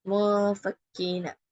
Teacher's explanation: இப்போ இங்க சுக்குன் செய்ய முஃபக்கீன அப்படின்னு சொல்லி நூனுடைய சவுண்டை மறைக்கிறோம் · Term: இஹ்ஃபாவுடைய சட்டம்